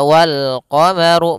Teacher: runnya dibaca tebal karena dia huruf ro yang berharakat damah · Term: ru-nya dibaca tebal